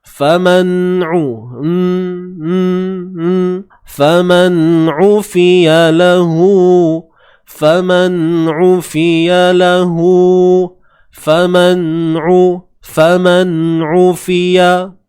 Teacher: Huruf ain baris hadapan u, sempitkan bahagian tengah kerongkong kita.